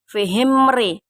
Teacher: izhar safawi karena ada huruf mim mati atau sukun bertemu dengan huruf ro. Cara membacanya terang di bibir dengan mulut tertutup.